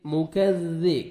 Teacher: کاف کو نرمی سے ادا کریں گے، ذال کو بھی باریک پڑھیں گے اور کاف کو بھی باریک پڑھنا ہے. ذال کو نرمی سے ادا کریں گے تاکہ زا میں ساؤنڈ مکس نہ ہو.